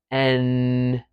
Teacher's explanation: M N is a another nasal consonant and you're going to say this similar to the M but with your tongue tip going up this time N to the D or T position but you let the air go through your nose